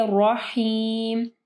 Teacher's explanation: رحمن الرحیم کو جو ہے واضح پڑھنا ہے، اس میں واو کی آواز نہیں آنی چاہیے، وحیم نہیں، ٹھیک ہے.